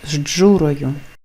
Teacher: з Дж звучить як ждж